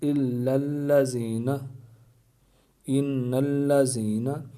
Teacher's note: لام سے پہلے زبر آ رہی ہے، لیکن اس کو باریک پڑھ رہے ہیں، موٹا نہیں کر رہے ہیں